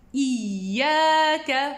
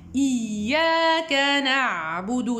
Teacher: Je laisse légèrement un passage entre le milieu de la langue et le palais supérieur pour pouvoir bien prononcer le nabr du ya. Iyaka, vous voyez, i, c'est ouvert.